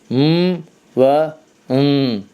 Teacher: bu hərflər yəni mim və nun hərfləridir. Xaric olur xayşumdan.